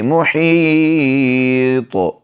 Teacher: طا کو موٹا پڑھیں گے